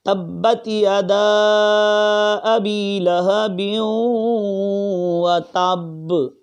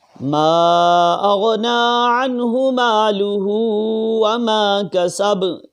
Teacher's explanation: اب یہاں ساکن کیا ہم نے، با کو ساکن کیا تو قلقلے کی آواز جو ہے لوٹتی ہوئی نکلی، قلقلہ خوب ظاہر ہوا